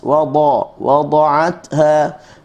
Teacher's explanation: bila kita sebut huruf dad ni, kita akan dapati tepi lidah kita kiri dan kanan akan kena dengan geraham atas